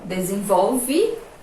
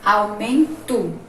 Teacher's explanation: Escreve de um jeito, mas na hora que a gente pronuncia, a letrinha vai ter um outro som. O E vai ter o som de I, ó, desenvolve, e o O vai ter o som do U, aumento.